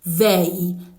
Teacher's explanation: your tongue still in between your teeth, and then it's coming with a level of vibration